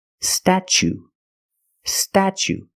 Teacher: the t is pronounced chch like chicken and change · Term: CH sound